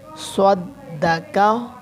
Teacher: काफ मोटा स्वाद भी मोटा दाल बारीक